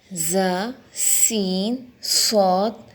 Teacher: ان 3 حروف ظ، س، ص کو ادا کرتے ہوئے سیٹی کی طرح تیز آواز نکلتی ہے۔ ان حروف کو حروف صفیریہ کہتے ہیں۔